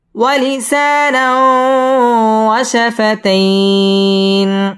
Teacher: ওয়ালিসানাও ইদগামে বা গুন্না, গুন্না সহ মিলিয়ে পড়তে হবে। · ওয়াশাফাতাইন মধ্যে লিন একালিফ টেনে পড়তে হবে।